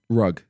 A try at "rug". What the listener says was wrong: That sounds like two O's. it's like you're saying R-O-O-G. Rug. Rug. Well, then R-O-G then. Rug. Yeah, but I'm saying rug with a U. But I say rug. But that is R-U-G, no?